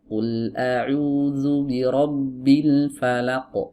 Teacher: laq di ayun, nggak boleh. Laq langsung masuk dari lam ke huruf qaf.